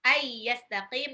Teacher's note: nun sukun ketemu ya, idgham miruna. Ayyastaqim, qafnya mad arid li sukun.